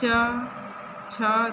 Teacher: देखिए आपकी जीभ स्पर्श कर रही है तालु को · जब इनको उच्चारण करेंगे आप, इन च से लेके यहाँ तक के वर्णों को उच्चारण करेंगे तो आपकी जो जीभ है वो मुख में ऊपर वाला हिस्सा जो तालु होता है उसको स्पर्श करती है, इसलिए इसका उच्चारण स्थान तालु बताया गया है। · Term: च वर्ग